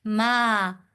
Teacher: بسم اللہ ما دو حرف کے برابر لمبا کیا جائے گا کیونکہ اس کے اوپر کھڑی زبر ہے، تو کھڑی زبر جہاں بھی آئے گی اس کو دو حرف کے برابر لمبا کیا جائے گا۔